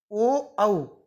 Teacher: जब ये जीभ नीचे तालु को स्पर्श करती है तब ये सही शब्द उच्चारित होते हैं। कंठ ओष्ठ, ओ, औ, इनका उच्चारण स्थान है कंठ ओष्ठ।